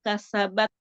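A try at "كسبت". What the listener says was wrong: taknya, tak sukunnya.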